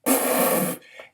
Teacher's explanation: You can't elongate the p sound without distorting it. It's something called a stop sound